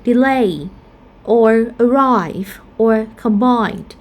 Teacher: These three words we have diphthongs in the second syllable, so the second syllable will have a primary stress.